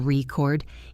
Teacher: If the stress is on the first syllable record, it is a noun like a vinyl record or a written record. If the stress is on the second syllable record, it is a verb meaning to tape something.